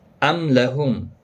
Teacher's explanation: میم ساکن پر اظہار ہوگا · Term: اظہار شفوی